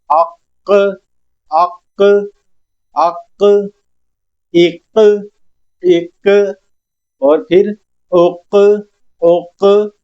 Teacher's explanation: आवाज पलटती हुई आ रही है। इस आवाज का पलटना कलकला कहलाता है। जुंबिश पैदा हो आवाज के अंदर जैसे वाइब्रेशन सी होती है उस तरह हमने आवाज को क्रिएट करना है।